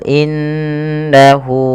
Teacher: innahu yaakulual Fal Inna Apabila ada huruf nun berharakat tasdid ini kita baca dengan bacaan gunah dengan cara menahan suara bunyi nunnya dan dimasukkan ke rongga hidung sepanjang dua harakat